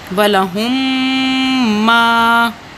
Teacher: یعنی دونوں میم ایک دوسرے سے مل جائیں گے، اور اس کو ادغام شفوی کہا جاتا ہے، یعنی کہ غنہ ناک کی آواز سے ادا کیا جائے گا